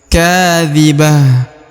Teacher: huruf k dibaca Dua harakat karena di depannya terdapat Alif